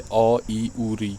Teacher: जिन वर्णों के उच्चारण में कम समय लगता है या एक मात्रा का समय लगता है उन्हें ह्रस्व स्वर कहते हैं